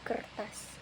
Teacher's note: perubahan bunyi ketika ujung lidah melengkung ke belakang mendekati langit-langit mulut. Contohnya pada kata kertas yang ditulis kertas. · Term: retrofleksi